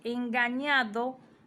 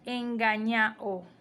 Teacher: Le quitamos la D dentro de la palabra, pero también decimos la vocal final. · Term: síncopa